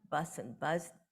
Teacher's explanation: like um German or Dutch and to some extent even Norwegian you cannot hear the final voicing